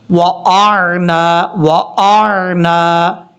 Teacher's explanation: گے تو حمزہ اور عین کو دونوں کو کلیئر کرنا ہے، حمزہ سختی سے پڑھا جاتا ہے، عین نارمل طریقے سے ، وَأَعْنَا، اس طریقے سے، با کو واو سے کنیکٹ کریں